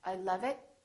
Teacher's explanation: it so don't say I love it say I love it make the uh really long